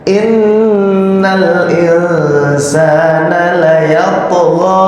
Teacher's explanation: Nun tasdid jangan lupa ini didengungkan